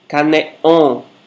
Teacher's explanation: Você dá uma ligeira fechada na glote que produz essa pausa. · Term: consoante oclusiva glotal